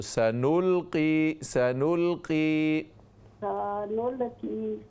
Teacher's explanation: سا لمبا نہ کریں سین کو